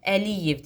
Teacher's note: Əliyev deyirəmsə vurğu liyə düşəcək. E vurğu qəbul etməyəcək.